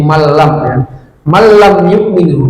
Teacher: mim sukun bertemu iya, ini namanya izhar syafawi. Jadi jelas mim sukunnya, jangan lama.